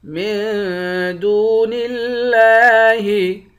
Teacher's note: دال کو واو کے ساتھ ملا کر ایک الف کے مقدار کھینچیں گے۔ لفظ اللہ کلام کے اوپر کھڑا زبر ہے، اس کو ایک الف کے مقدار کھینچ کر پڑھیں گے۔